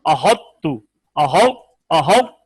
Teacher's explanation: یہاں پہ ہم نے تفخیم پیدا کرنی ہے. احط پھر تا کو باریک کر دینا ہے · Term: طا کی تفخیم